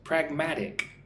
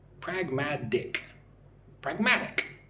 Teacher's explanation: Three syllables. Notice how uh the T is fairly soft. Pragmatic. It's almost like a D, duh. Pragmatic.